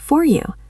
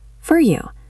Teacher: In clear speech, it is for, like the number, but in a sentence, it becomes fur, short and soft. Fur. This is for you.